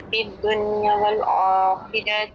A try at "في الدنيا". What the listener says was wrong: فی الدنیا لمبا کریں گے.